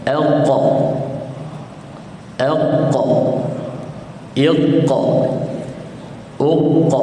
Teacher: Tuan-tuan rasa tak belakang lidah tuan-tuan naik ke atas bila dia sentuh al. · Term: makhraj qaf